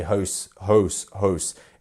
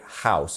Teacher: It's almost like a deeper OU sound, but in the south of England, we would say house, almost an ow sound